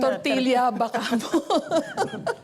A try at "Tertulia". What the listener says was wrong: Hindi tortilla. Tertulia. And you have to roll your R's. Tertulia po.